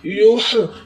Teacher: یہ ہا کا جو لفظ ہے یہ حلق سے ادا ہوگا، اس کا مخرج حلق ہے، حلق سے ادا ہوگا، اور جو یہ یا ہے، یہ یا جو ہے یہ حرف توجہ کی طرح ہی ادا ہوگا۔